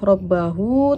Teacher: huruf ra dibaca tafkhim sebab berharokat fathah